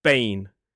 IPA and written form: beɪn (bane)